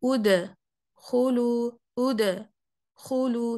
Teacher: उद को अलहदा कर दिया खुलू की आवाज से, तो बीच में ना एक मैंने पॉज ले लिया, बीच में एक गैप डाल दिया और उद को लंबा कर दिया, उद खुलू, उद खुलू, तुम, तुबतुम, नो, उदखुलू, तुबतुम, तुबतुम, ठीक है।